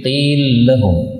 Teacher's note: lam ketemu lam ini bisa idgham menjadi qil lahum